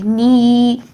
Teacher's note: اگر یا ساکن سے پہلے زیر آئے تو یہ زیر کی ہی ساؤنڈ کو ہم 2 سیکنڈ کے لیے لمبا کر دیں گے، نی، ٹھیک ہے.